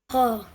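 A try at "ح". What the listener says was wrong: Make it more harder.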